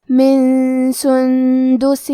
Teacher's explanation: کلمت سندس میں یہاں نون ساکن ہے، پھر حرف الدال ہے، دال حروف الاخفاء میں سے ہے تو ہمیں یہ حکم کو غنہ کے ساتھ ادا کرنا ہے